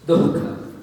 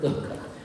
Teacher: you need to pronounce the visarga before the ka. Dukkha. Not dukkha, but dukkha.